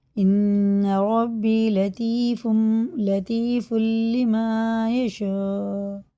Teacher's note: مد متصل ہے، 4 الف کو برابر کھینچ کے پڑھیں